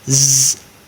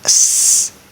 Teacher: You'll feel vibration for z. That's a voiced sound, but not for s.